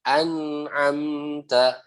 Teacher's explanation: Nun dan mim di situ ada gunahnya sedikit. Ya, jadi jangan an am ta, tapi an'amta begitu ya.